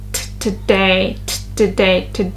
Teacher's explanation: And the stress is is on the second syllable t today.